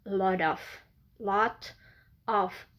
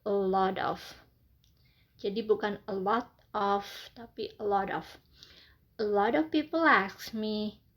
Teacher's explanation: kalau di American ketika ada fonem teh berada di antara dua vowel, maka kamu akan membuat sound teh tersebut menjadi flap T.